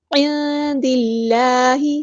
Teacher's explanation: عند اللہ میں نون ساکن کی آواز کو ہم نے چھپانا ہے کیونکہ یہاں پہ اخفا ہو رہا ہے · اس میں جلالہ جو ہے وہ ترقیق ہوگا، اللہ کا لام باریک پڑھیں گے